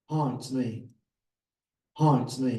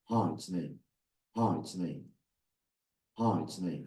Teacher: And I want to be now the alpha male, so I reduce the pitch digitally.